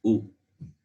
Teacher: the only sound which can come by rounding your lips only from the lips is ooh